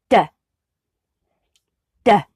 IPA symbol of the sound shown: d